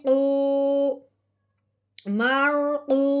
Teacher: یہ بات کیوں ذہن میں رکھنی ہے کہ واؤ ساکن ہو اس سے پہلے پیش ہو تو اس واؤ ساکن پہ مد کا قاعدہ جاری ہو جاتا ہے کہ پچھلے والا حرف جب واؤ ساکن کے ساتھ ملے گا تو ساتھ ساتھ ایک الف کے برابر لمبا بھی ہوگا